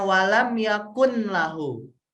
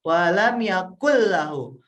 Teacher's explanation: Nun nya itu kan nggak kedengeran